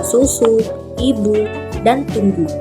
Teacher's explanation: dilafalkan sebagai bunyi u apabila berada pada silabel terbuka seperti pada kata susu, ibu, dan tunggu.